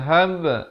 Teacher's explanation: diberikan lantunan huruf ba, seperti dal juga. Hab, jangan baca fadhhab, tak betul.